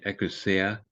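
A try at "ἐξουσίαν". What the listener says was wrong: Exousion. not a key, it's a xi. So it's like our X.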